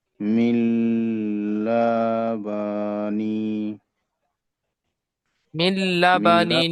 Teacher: তাই নুনকে লামের সাথে মিলিয়ে বিনা গুনায় জাহির করে পড়তে হবে।